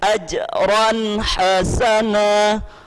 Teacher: Ajran, tanwin bertemu dengan huruf ha, ha kecil. Ini hukum bacanya adalah izhar. Jelas tanwin ini kita baca tidak boleh ada dengung.